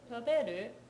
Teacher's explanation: that's middle, high, low for the last three syllables of the question